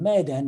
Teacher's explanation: the melody rises on the accent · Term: pitch accents